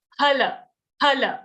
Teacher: These labial sounds or oshtha varna, they are produced when you join your lips together.